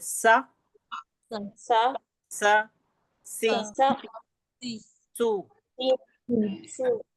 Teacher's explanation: सीन में एक किस्म की सीटी जैसी आवाज होती है। सीन बारीक पढ़ा जाता है ये भी।